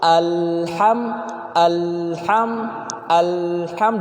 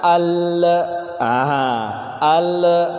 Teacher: alham nya tidak boleh dipantulkan